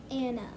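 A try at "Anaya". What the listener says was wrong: Not Anna. You skipped a syllable. We know when we get to these letters say a sound. They have a sound all by themselves. So our chin is going to have to change positions to get to here.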